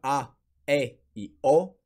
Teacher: на два основни вида широки които са а е и о широки са защото устата е по-отворена